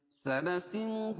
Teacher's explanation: اس کو ایک الف کے برابر کھینچ کے پڑھیں گے، اور وقفہ کی صورت میں نون پر جزم لے کر آئیں گے، اور یہاں مد عارض وقفی ہوگا۔ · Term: مدہ